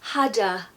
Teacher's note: We're not saying had a, we're saying hadda. And a is a schwa, so it's easier to do that